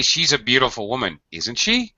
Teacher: if you're giving an opinion in your statement you're going to follow it with a falling falling tag falling intonation tag